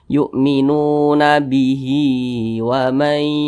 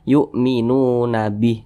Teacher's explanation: Kalau dia sukun maka kalau dia berhenti di huruf H maka disukunkan. Tapi kalau misalkan dilanjutkan maka huruf H dibaca panjang · Tapi kalau kita berwakaf atau berhenti pada huruf H maka huruf H disukunkan.